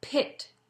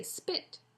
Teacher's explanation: when we say pit the p is aspirated but when we say spit the p is not